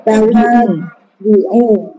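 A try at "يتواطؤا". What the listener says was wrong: Yutawa do. Yutawa do. Jangan tawa di'u ya.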